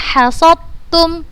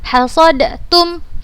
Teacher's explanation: Huruf dal sukun bertemu dengan huruf ta berharokat, maka dibacanya langsung ke huruf yang kedua dan tanpa gunnah. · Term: idgham mutajannisain